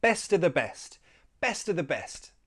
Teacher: we drop that F and we just have a schwa sound. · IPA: /ə/